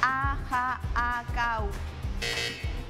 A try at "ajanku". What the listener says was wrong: Te falta Te faltó una na. Una na te faltó, Claudia.